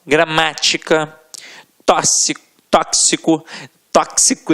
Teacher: a sílaba tônica estará na antepenúltima sílaba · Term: proparoxítonas